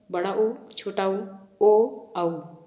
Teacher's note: इनके उच्चारण में जीभ का पिछला भाग ऊपर उठता है। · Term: पश्च स्वर